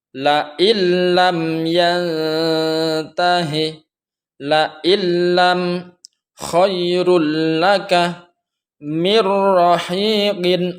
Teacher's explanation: membunyikan suara nun mati atau tanwin dengan memasukkannya pada huruf setelahnya dan dibaca tanpa berdengung. Jadi kalau idgham bila gunnah ini memasukkan suara nun mati atau tanwin kepada huruf idgham bila gunnah, yaitu ra dan lam, tanpa ada dengung.